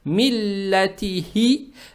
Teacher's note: Далее стоит буква ха, она мягкая и на выдохе произносится.